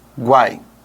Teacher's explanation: Aqui você tem semivogal mais vogal mais semivogal. E você não separa isso na hora de pronunciar. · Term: tritongo